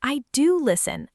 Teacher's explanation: notice the stress is on do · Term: emphasis